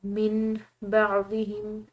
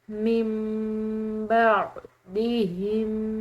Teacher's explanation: نون ساکن کے بعد اگر با آ جائے تو ایسی صورت میں نون ساکن میم سے بدل جاتا ہے